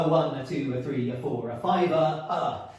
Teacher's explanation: you get the 2 unstressed syllables right next to each other